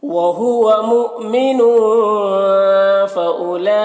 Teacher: مؤمن کے نون میں تنوین ہے، یہاں پر اخفا ہوگا، نون کے آواز کو ناک میں چھپا کر پڑھیں گے. فَأُولَئِكَ یہاں پر واو کو نہیں پڑھنا ہے، اور لام جو مد ہے مد متصل ہے.